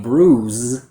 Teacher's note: So the mistake I hear with this word is the pronunciation of the voiced Z sound for the letter S. So instead of saying bruise with that voiced vocal cord quality, students pronounce a voiceless sound